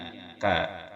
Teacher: kaf makhrajnya berada di pangkal lisan setelah qaf. Qaf kemudian kaf di depannya yang disentuhkan pada langit-langit mulut yang atas yang berhadapan dengannya.